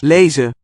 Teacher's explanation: What we see is the final N being suppressed. Lezen. You have a consonant initial in the following word.